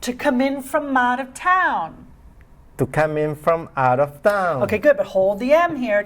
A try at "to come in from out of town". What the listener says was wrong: Okay, good, but hold the M here. To come in from out of town.